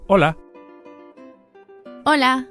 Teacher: You can hear that the initial H is silent.